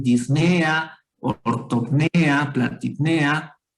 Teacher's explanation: La elevación del tono de voz está en la E. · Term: acento en la E